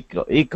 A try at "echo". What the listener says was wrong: it's a short I not a long e